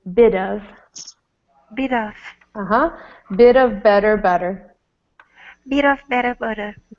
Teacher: Another place where T is like a D is bit of.